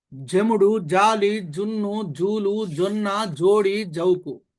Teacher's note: జ లో అ ఉ ఊ ఓ ఓ ఔ వచ్చినప్పుడు అవి దంత్యం అవుతాయి.